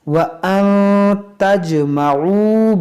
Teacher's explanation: नून साकिन के बाद ता है, यहाँ पर भी इख्फा करेंगे और जीम में कलकला करेंगे। · ये वाव मद्दा है जो खींचेंगे, वाव साकिन से पहले पेश है।